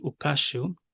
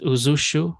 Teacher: the nun or the n sound assimilates to the the following consonant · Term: assimilated nun